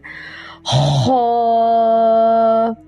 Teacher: یہ گلے کے شروع سے ادنا حلق سے نکلتا ہے، یہ بھی ایک الف کے برابر لمبا کرنا ہے